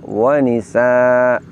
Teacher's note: mengganti fathatain atau fathah tanwin tersebut menjadi fathah panjang. Kaidah tajwid ini lazim disebut dengan istilah mad iwad, yaitu bacaan panjang yang terjadi karena terjadi penggantian fathah tanwin diganti menjadi fathah panjang.